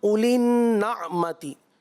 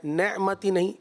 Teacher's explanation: اسی طرح اولی النعمتی، نعمتی زبر کے ساتھ، زبر جو ہے وہ مجہول کی طرف نہ جائے، نعمتی نہیں، اولی النعمتی، اس انداز پر آپ ادائیگی کریں گے.